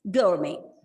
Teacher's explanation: Gourmet. And the stress is on the first syllable and the T is silent